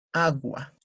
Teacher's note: al decir esa palabra, pues, la mayor fuerza de voz está en la A, agua.